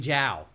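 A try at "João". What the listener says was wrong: Is that how you pronounce that in Portuguese? don't think you pronounce the J like that. I think it would be more Like yao.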